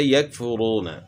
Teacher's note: کاف کی آواز باریک اور بغیر جھٹکے والی ہوتی ہے